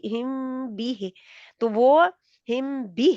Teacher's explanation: शफवी यानी कि अपने होंठों को वहां पे होल्ड करके रखना है। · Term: इख्फा शफवी